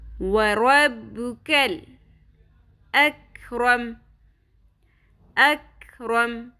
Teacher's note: رو پر کریں گے اور کیف کو باریک پڑھیں گے, لام پہ قلقلہ نہیں کرنا